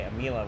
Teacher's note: I say Amila where I elongate the I and then just like don't really know what to do with the A.